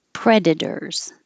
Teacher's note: the T changes to a d and it looks like o r but it sounds like er